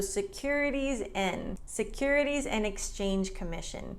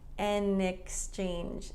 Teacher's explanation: Notice that Americans drop the D in and a lot.